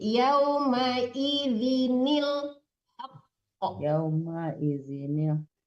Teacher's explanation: yaumaidinil haqq yaumaid wal waznu yaumaidzinq kenapa mesti ditekan ke nun kecil jangan yaumaidin ya yaumaidinil diqfnya yaumaidinil ibu ibu kan bacanya yaumaidin jangan ditekan Nun itu nunnya tidak tasdid.